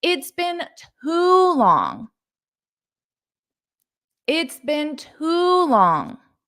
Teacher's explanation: you can emphasize that word too because this is an intensifier. So you can make the sound of this longer to intensify it.